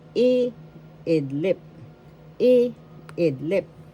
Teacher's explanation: First syllable I, second syllable id, third syllable lip. The first syllable has the accent